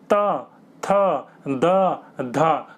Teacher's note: आपकी जीभ जो होगी वो दांत पर टकराएगी। दांत पर बिना टकराए आप बोल नहीं सकते इनको, इसलिए इनको दंते कहा जाता है।